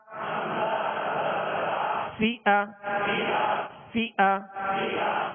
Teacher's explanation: فا کو جب ادا کریں گے تو اوپر کے جو دو سامنے والے دانت ہیں اس کے کنارے اور نچلے ہونٹ کا تر حصہ، یہ مخرج ہے، یہ نکلنے کی جگہ ہے فا کے